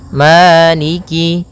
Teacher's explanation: ada hukum tajwid berupa mad tabi'i, yaitu adanya fathah bertemu dengan alif, panjangnya 2 harokat